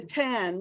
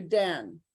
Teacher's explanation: if they don't aspirate the tan we'll hear dan